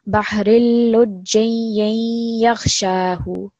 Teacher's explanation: So over here as well, just remember that when you're joining this ya, which is attached to the jim, you're going to make a slight nasal sound when you're merging it with the ya mushaddad. So bahrilujiyakhshahu.